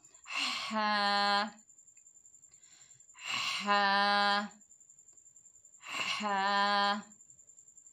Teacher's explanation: तो हा जो है हलक के दरमियान से अदा होगा।